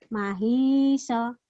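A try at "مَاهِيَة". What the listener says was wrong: Kurang panjang.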